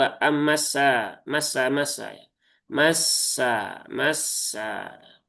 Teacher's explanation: sin punya sifat rakhawah. Maka ketika bertasydid pun juga tunaikan rakhawahnya. Jangan terburu-buru.